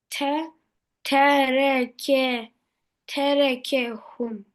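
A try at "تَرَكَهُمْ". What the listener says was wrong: aferin.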